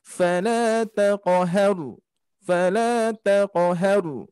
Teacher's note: Qalqalah huruf ko seperti biasa pantulannya mengarah ke harokat fathah. Maka dari itu dibacanya ringan.